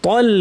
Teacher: ত ভারী কিন্তু এরপরে তল, লামটা পাতলা